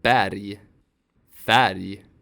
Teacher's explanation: When these short vowels are followed by R, they become A. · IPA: [æ]